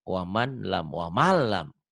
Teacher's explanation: Cuma nyamber doang. Nggak ditahan, nggak ada dengung.